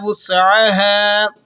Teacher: سین کو آپ نے باریک سیٹی کے ساتھ ادا کرنا ہے